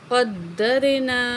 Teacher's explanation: قاف کو موٹا پڑھیں گے اور قاف کو دال سے ملائیں گے